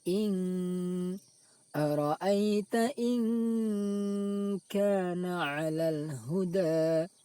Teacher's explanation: suara nun sukun tersebut dibaca samar, ikhfa samar, yaitu samar antara izhar dan idgham. Tidak dibaca izhar jelas, in juga tidak dibaca idgham dimasukkan ke huruf kaf.